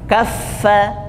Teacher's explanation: huruf fa itu ketika tasydid juga dibaca hembus dulu nafasnya. Kaffa, ya. Jadi tidak dihentikan bunyi hembusan nafasnya.